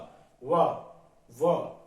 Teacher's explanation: देखिए होठ ऊपर के दांत से टकरा रहे हैं